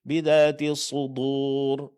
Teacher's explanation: Sudur terpengaruh oleh tebalnya huruf shad. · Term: Menebalkan pengucapan huruf dal